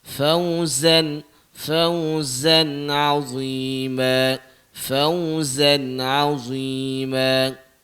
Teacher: Dia bagi getar sikit zai tu